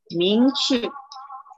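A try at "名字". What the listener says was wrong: Bukan ce lidah gini Lidah kat bawah. Lidah kat sini saya tunjuk kamera ni lidah, ujung lidah tu. Ming-zi.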